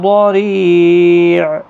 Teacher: را باریک پڑھا جائے گا زیر کی وجہ سے، ری یا مدہ بھی ہے، 1 الف کی مقدار کے برابر کھینچ کر بھی پڑھیں گے، عین ساکن پڑھا جائے گا وقف کی صورت۔